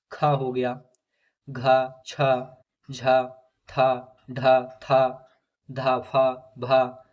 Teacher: महाप्राण व्यंजनों के उच्चारण में दोस्तों हकार जैसी ध्वनि विशेष रूप से रहती है और स्वास अधिक मात्रा में निकलती है। और प्रत्येक वर्ग का दूसरा और चौथा वर्ण तथा समस्त ऊष्म वर्ण महाप्राण है।